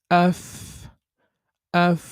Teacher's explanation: নিচের ঠুটের প্যাট সামনের উপরের দুই দাঁতের আগার সাথে লাগিয়ে ফা উচ্চারিত হয়